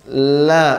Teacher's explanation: Ketika kita ucapkan, ya, la, maka ketika suara atau udara berada di ujung, dia akan menyimpang ke bagian samping lidah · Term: huruf lam